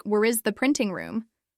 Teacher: When I asked her to repeat the full sentence for me, she said, "Where is the printing room?" But it came out rushed, almost like, "Where is the printing room?" All the words were mashed together. There was no clear separation, no emphasis, no rhythm.